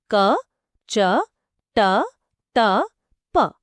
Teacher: ఇవి అల్పప్రాణ శ్వాసములు అంటే అన్వాయిస్డ్ అన్ఆస్పిరేటెడ్ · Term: పరుషాలు